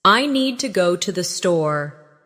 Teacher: The stress is on need and store, while to and the are softer and faster. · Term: rhythm